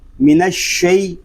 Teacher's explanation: شین جو ہے یہ زبان اور تالو کے درمیان والے حصے سے ادا ہوگا، اور جب ہم شین کو ادا کریں گے تو آواز منہ میں پھیل جائے گی